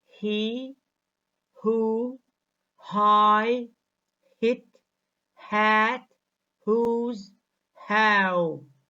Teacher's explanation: is the opening between the vocal cords half is fricative because it is produced with friction caused by forcing air stream through the narrow passage found between the vocal cords when the glottal fricative half is being produced the speech organs